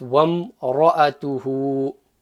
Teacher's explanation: In effect, the alif becomes silent.